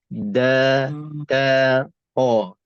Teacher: Tiga-tiga huruf ni tepi lidah bahagian depan dia akan tekan ataupun dia akan menekan bahagian belakang gigi depan atas kita.